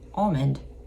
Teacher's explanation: We don't over enunciate the L, but like you can tell you're saying almond.